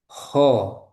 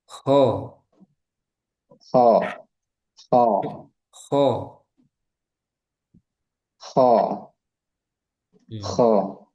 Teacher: ko ada ngoroknya sedikit. Ada kotornya. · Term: huruf K